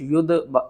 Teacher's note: یا دال پیش ید، دال کے اوپر قلقلہ کریں گے